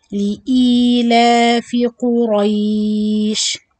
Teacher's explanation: Both قاف and راء heavier.